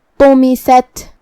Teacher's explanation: آخر میں جو کہ تا ساکن ہے تو یہاں ہم حرف تا کو ہمس سے پڑھیں گے. ہمس کا معنی ہے کہ حرف کی آواز ایسے کمزور ہو کہ اس میں پستی پائی جائے